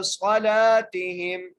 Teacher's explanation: لام کو میں نے ایک الف کی مقدار کھینچ کے پڑھا